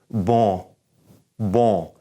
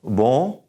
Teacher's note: Although we did N, when we see the N in a word and it's in the middle, we've got to kind of do a different thing here. So we're going to take this N and we're going to push it through our nose. And our tongue is not even going to touch the top of our mouth where we make an N sound.